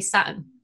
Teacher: people always pick me up on how I say Saturn. With the drop T. I just don't say the T.